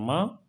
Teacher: सघोष है अल्प प्राण है और नासिक है